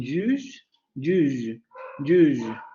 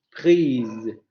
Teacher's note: Vamos a tener también alargamiento de todas las vocales ante lo que se denomina consonantes alargantes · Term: vocal alargada